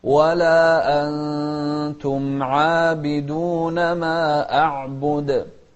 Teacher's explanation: أخفينا النون مع المقدار الحركتين · شوف الإخفاء هني، نون ساكنة بعدها تاء